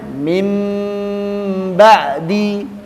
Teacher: nun sukun atau tanwinnya diganti bunyinya mim sukun disertai dengung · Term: iqlab